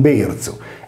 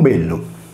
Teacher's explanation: belzu è rotacizzato in nuorese con berzu e lateralizzato in campidanese con bellu. In altre parole, le voci latine velium, letto velzu o belzu, e bellum, in sardo bellu, sono la stessa cosa.